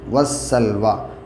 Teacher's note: واو کے اوپر جو کھڑا زبر ہے سلوا ہی پڑھا جائے گا، کھڑا زبر گرتا نہیں ہے، اور یا سائلنٹ ہے، یا سے کوئی وہ نہیں ہے، وَالسَّلْوَىٰ۔